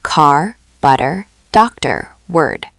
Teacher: Now the American R is what linguists call rhotic, meaning Americans pronounce the R even after a vowel, even at the end of a word. · The whole vowel is colored by the R. Yes, that's called an R-colored vowel or a rhotic vowel.